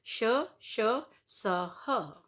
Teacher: ऊष्म व्यंजन ऊष्म गर्म, इन व्यंजनों के उच्चारण के समय वायु मुख से रगड़ खाकर ऊष्म पैदा करती है, यानी उच्चारण के समय मुख से गर्म हवा निकलती है।